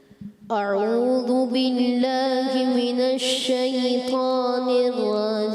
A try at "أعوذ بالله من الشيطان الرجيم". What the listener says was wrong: اچھا اتنا کھینچنا نہیں ہے نا۔ اعوذ باللہ من الشیطان الرجیم،